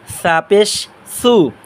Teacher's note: জিহ্বার আগা সামনের দাঁতের আগার সাথে নরম আওয়াজে